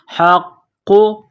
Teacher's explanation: نقطہ والا قاف ہے، بڑا قاف، اس کو موٹا کرنا ہے، قاف کے اوپر تشدید ہے، قاف کو دبانا ہے، سختی کرنی ہے